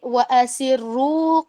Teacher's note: وَأَسِرُّوا میں واو کو آپ نے پڑھنا ہے لمبا کر کے وہ پیش کے ساتھ, اور وہ جو اس میں الف لکھا ہوا ہے اس کو آپ ڈراپ کر دیں گے.